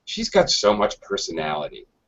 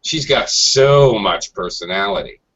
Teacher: sarcastically dragging the so much personality that might be negative